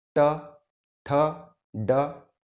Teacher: तालू आपके दांत का जो आखिरी हिस्सा है उसे ठीक ऊपर का हिस्सा, जैसे च, छ, ज। तालू के थोड़ा और ऊपर के हिस्से की अगर हम बात करें, यदि वहां पे आघात लगता है तो वे सब होंगे मूर्धन्य प्रकार के व्यंजन